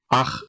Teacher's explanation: if it’s at the end of a syllable, then I pronounce it as I would in German, like [χ] if it follows a back vowel